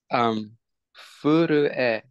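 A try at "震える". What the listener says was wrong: Perfect. Furueru. Nice.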